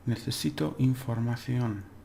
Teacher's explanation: Necesito, because it ends in a vowel, the stress is on the second to last syllable.